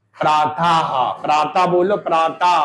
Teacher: इसमें हा की ध्वनि ज्यादा सुनाई देती है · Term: विसर्ग